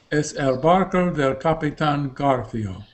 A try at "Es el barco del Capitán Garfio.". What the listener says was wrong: Pero no hagas hueco, no hagas espacio entre es el. Pronuncia en español Capitán. Capitán Garfio.